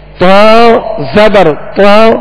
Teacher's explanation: زبر اور زیر میں تو کو ادا کرتے ہوئے ہونٹ گول نہ ہو، اور جب اس پر پیش ہوگا تو ہونٹ گول ہوں گے.